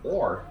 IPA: ɔr